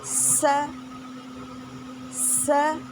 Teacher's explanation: زبان کی نوک نیچے جو دانت ہیں ان کے کناروں سے لگی ہے اور اس کو ہمیں سختی سے لگانی ہوگی، یعنی زبان کو سختی سے لگانی ہوگی ہمیں۔ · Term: سیٹی والے حروف